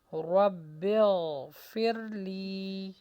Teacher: رو کو موٹا کیجیے اور غین کی آواز کو چلنے دیجیے